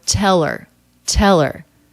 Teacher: we have a dropped h the er the schwa r ending just links on to the word before